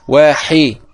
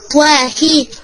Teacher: يكون في الحاء بحة